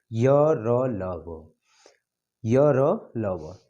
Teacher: अब इसमें र को लुंठित वर्ण कहते हैं, ल को पार्श्विक वर्ण भी कहते हैं। वर्ग, य का तालव्य, र का वर्त्स्य, ल का वर्त्स्य, व का दंतोष्ठ। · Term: अंतस्थ व्यंजन